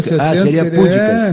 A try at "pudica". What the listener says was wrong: Seria uma proparoxítona, mas não é uma proparoxítona, é uma paroxítona. Pudica.